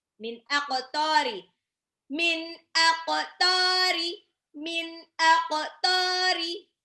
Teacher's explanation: Qafnya dipantul karena dia huruf qalqalah. Kalau disukunkan di huruf jadi qalqalah, dipantulkan.